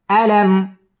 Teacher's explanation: আলাম মিম সাকিন ইজহারে খাস গুন্না ছাড়া পড়তে হবে